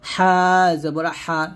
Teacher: হা হলকের মাঝখান দিয়ে বলবেন